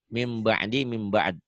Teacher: bunyi nun mati atau tanwin itu kan bunyinya n. Nah, N-nya ini berubah jadi M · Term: iklab